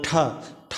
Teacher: ये मूर्धन्य है, महाप्राण और अघोष है।